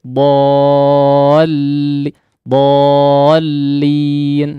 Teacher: tidak masuk begitu saja kepada huruf lam tapi agak menghentak sedikit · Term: hentakan